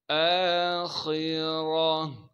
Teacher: حمزہ پر کڑا زبر ہونے کی وجہ سے حمزہ کو ایک الف کے مقدار کھینچیں گے. خا کو موٹا کر کے پڑھیں گے.